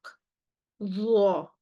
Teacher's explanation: the pronunciation of za, it has both istila and ittibaq.